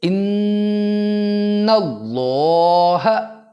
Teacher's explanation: اللہ سے پہلے نون کے اوپر زبر ہے، تو لہٰذا اس لفظ اللہ کو موٹا پڑھا جائے گا